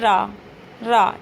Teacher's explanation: ऐसे वर्ण जिनका उच्चारण करते समय जीभ ऊपर की ओर मुड़ जाए। ठीक? तथा जीभ में कंपन हो। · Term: लुंठित व्यंजन